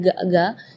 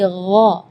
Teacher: Jadi kalau ga itu dia makhrajnya dari lidah. Ya, tapi kalau huruf ghain itu dari bagian tenggorokan ya.